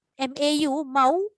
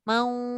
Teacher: Yang saya nak sebut ni, dia pergi dekat waw, lama dekat waw tapi tak berdengung. Maksudnya dia tak lalu hidung pun.